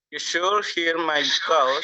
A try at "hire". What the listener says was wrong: Hire. Ini dibaca hire. You should hire me. You should hire me. Bukan here. Hire. Hire ini dibaca hire ya.